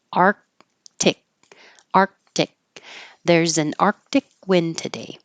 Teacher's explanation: there's 2 K sounds but you won't hear either sound your tongue goes to the K position though